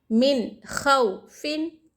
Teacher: غنہ بھی نہ ہوگا، اخفا بھی نہ ہوگا، بلکہ اظہار کر کے پڑھنا چاہیے، ظاہر کر کے پڑھنا چاہیے نون کو